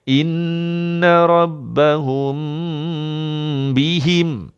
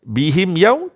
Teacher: Kerana mim ni atasnya kosong, yang ini mim atasnya ada tanda sukun. Jadi dengung ni lambatkan sikit, tekan di hidung 2 harakat.